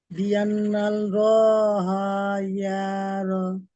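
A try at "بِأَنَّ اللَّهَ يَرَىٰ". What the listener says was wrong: সব টান হয়ে গেল।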